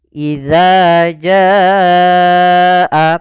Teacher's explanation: syatibi yaitu empat atau lima harakat maka idza Jaa idza Jaa panjangkan dulu janya sepanjang empat harakat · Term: mad wajib muttasil